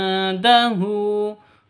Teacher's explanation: Indahu nun mati bertemu dengan dal, samar didengungkan, siap-siap ke huruf dalnya. Indahu, hu panjang boleh 2 ketukan.